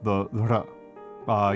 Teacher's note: the r is like a light roll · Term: light trill